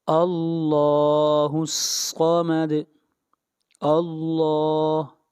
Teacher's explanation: لفظ اللہ کو موٹا پڑھا جائے گا اس لیے کہ اللہ جل شانہ کے نام سے پہلے زبر آ رہی ہے